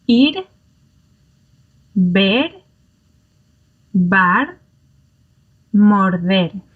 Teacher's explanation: So far we've looked at R1, and R1 happens when it is in between two vowels, or at the end of a syllable. And it's that single R sound, the flap sound, like the pronunciation of bottle, as I'm suggesting, or butter